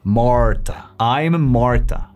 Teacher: En español diríamos Marta, pero las R's en inglés son mucho más sutiles y se producen desde la garganta, en lugar que desde la boca como en español.